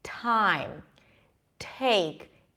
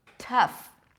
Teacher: when there is a T and then a vowel right after, it's aspirated, so there is this little H sound, almost like you're whispering